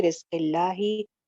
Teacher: जब लफ्ज़ जलाला से पहले जेर हो तो फिर अल्लाह के नाम लाम को मोटा नहीं पढ़ते। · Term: बारीक